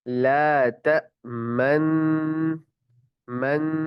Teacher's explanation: ला तमन्ना, एक ही नून मुशद्दद, एक ही नून पढ़ेंगे, लेकिन जो ला तमन, जब हम मन कर रहे होंगे ना, मन गुन्ना कर रहे होंगे, तो उसी गुन्ने के दौरान हम क्या करेंगे, होंठों को गोल करेंगे और फिर उसके बाद छोड़ देंगे।